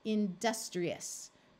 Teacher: this I is going to take on a long e sound